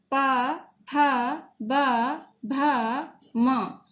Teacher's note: ये स्पर्श करते हैं ओष्ठ यानी होठों से, तो इन्हें ओष्ठ भी बोलते हैं।